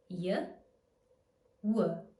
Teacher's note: However, the weak vowel, which can be I or U, will make a different sound. The weak I becomes more of a Y sound, and the weak U turns into a W sound.